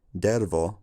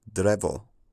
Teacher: that's called metaththesis when two sounds flip places